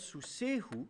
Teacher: avec contraction de la diphtongue, de susai plus hu, vous avez un sous sehu